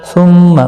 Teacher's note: ثم میم مشدد پر گنہ ہوگا. لا الف مدہ ہے، ایک الف کی مقدار کے برابر کھینچ کر پڑھیں گے.